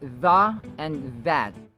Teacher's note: the initial sounds have the voiced TH sound or the hardened TH sound